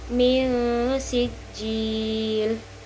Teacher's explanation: Kemudian terdapat juga ikhfa hakiki pada bacaan min sijil karena nun sukun bertemu dengan huruf sin sehingga dibaca samar dan dengung